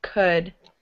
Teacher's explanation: Not an ooh. There's no L. It's silent.